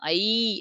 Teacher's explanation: இப்ப ஐ அப்படின்னு நான் சொல்லும்போது கடைசில ஈன்னு முடியுதா அப்ப ஈ தான் இணை எழுத்து